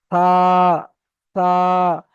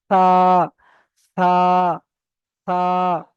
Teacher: জীবের আগা এবং সামনের উপরের সামনের উপরের দুই দাঁতের আগার সঙ্গে লাগিয়ে চেপে উচ্চারণ করবেন